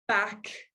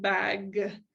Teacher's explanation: final consonant devoicing, substituting a final voiceless consonant for the voiced consonant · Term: final consonant d voicing